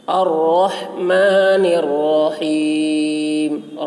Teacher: الرحمن کی را کو پر پڑھیں گے اور ہا کو حلق سے ادا کریں گے